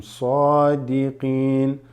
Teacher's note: Sa on the sad, you extend it slightly.